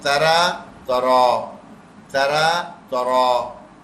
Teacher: اچھا یہ را کو موٹا کر کے پڑھنا ہے